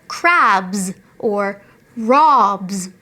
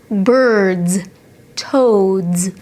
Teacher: voiced sound so if you have a b ending sound then the s at the end after that will sound like z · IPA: /z/